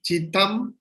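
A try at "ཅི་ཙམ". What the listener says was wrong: Tam? You say Tam. It's not Tam. Tam. Sam.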